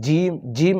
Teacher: জিম আদায় হবে জিহ্বার মধ্যভাগ জিহ্বার যে মাঝের অংশটুকু রয়েছে সেই অংশটুকু উপরের তালুর মধ্যে লাগবে তো জিম আদায় হবে এটা পাতলা করে যেরকম সা আদায় করতে